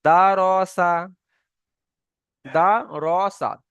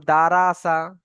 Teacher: রর উপরে যদি জাবার বা পেশ হয় তাহলে সেই রটি পুর হবে, মানে মুখ গোল করে পড়তে হবে। এখানে রর উপরে জাবার এসছে, মানে এই রকে আমরা যখন পড়বো মুখ গোল করে পড়বো, পুর করে পড়বো।